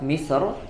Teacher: pada kalimat misr ya, itu dibaca dengan tafkhim ya